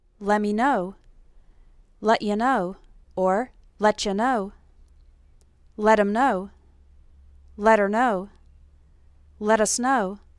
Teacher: it almost sounds like one word instead of 3